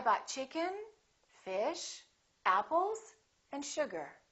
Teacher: have a rising intonation I bought chicken fish apples and sugar the last one will have falling intonation so we go up up up down · when you have that Rising intonation people know that that's not the last element something more is coming